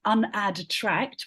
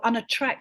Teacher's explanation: So what our mouths do when we say unattract, yep, rather than saying unadtract, we go unattract and we miss out the d altogether